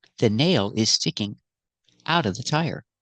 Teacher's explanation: Sticking out of sounds like sticking outa.